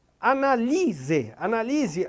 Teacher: Analise a sílaba tônica é o li, né? Então, eu tenho a palavra, a sílaba tônica aí, na penúltima e não na antepenúltima.